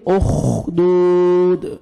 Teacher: second खींचना है और लास्ट में दाल साकिन कलकला करेंगे, उखदूद, खा को अच्छी तरह जोर से पढ़ेंगे, मोटा करके पढ़ेंगे